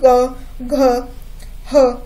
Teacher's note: जिभेचा जो काही मागील भागाचा जो म्हणजे पडजिभेचा जो भाग असतो थोडा अलीकडचा स्पर्श तिथं होतो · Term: कंठवर्ण